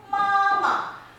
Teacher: you will see it's flat and it's also long